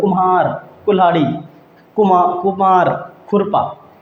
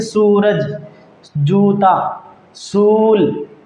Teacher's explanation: इसमें भी वही है जैसे सेम इनमें था कि एक को कम समय में बोलते हैं, एक को लंबे समय में बोलते हैं। ऐसे इनमें जिनमें छोटा ऊ की मात्रा लगी होगी उनको जल्दी बोल देंगे, और जिनमें बड़े ऊ की मात्रा लगी होगी उनको थोड़े सांस खींच करके बोलेंगे